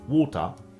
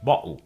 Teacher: the T in water, as well as the T in Gretel, is generally pronounced as a glottal stop in Cockney English. So, while in some British accents, it would be water, in Cockney it's [music] water.